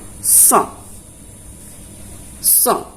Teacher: Huruf So keluarnya dari ujung lidah menepati 2 gigi seri bawah.